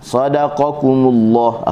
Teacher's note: qa pangkal lidah bertepatan dengan langit yang lembut, kumullah kaf pangkal lidah bertepatan dengan langit yang keras